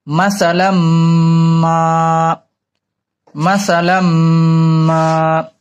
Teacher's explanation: এখন মিমে গুণনা করতে হবে, গুণনা করে আবার টান দিতে হবে, এক আলিফ।